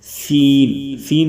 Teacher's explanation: سین کی آواز کے ساتھ تھوڑی سی سیٹی کی بھی آواز آئے